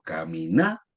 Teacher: la fuerza vaya en la na, no se tilda porque la frase terminó en n, s o vocal.